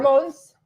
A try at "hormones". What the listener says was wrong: With an A. It's hormones. There's an O in there. But you say it like your dad did from Michigan with an A.